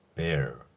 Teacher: 됩니다 곰이라는 단어가 있습니다 이렇게 발음할 수 있죠 그리고 여기에서도로 이된 R 소리는 거의 내지 않거나 약하게 소리 내거나 아예 소리를 내지 않는 경우도 볼 수 있습니다